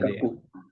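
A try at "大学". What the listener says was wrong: Terbalik. Daigaku yang bawah. Kalau universitas, daigaku.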